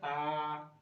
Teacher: खुला यानी की मुख पूरा खुला हुआ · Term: विवर्त